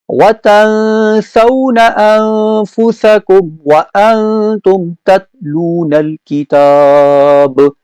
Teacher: نون ساکن کے بعد سین، نون ساکن کے بعد فا، نون ساکن کے بعد تا، تو یہاں پر اخفا غنہ ہے